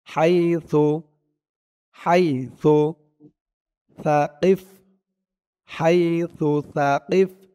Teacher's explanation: এই থা আর জাল, এই জাল, এই দুইটা অক্ষরের উচ্চারণ মুখের এক জায়গা থেকেই হয়। জিহ্বার মাথা, উপরের দাঁতের মাথা, এই দুইটা একসাথে লাগে এই থা আর এই জাল দুইটা উচ্চারণ করার সময় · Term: থার উচ্চারণ